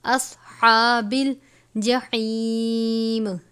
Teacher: صاد کو پر پڑھیں گے، ہا کو باریک پڑھیں گے